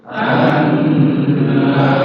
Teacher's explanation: karena nunnya panjang Mad thi'i dipanjangkan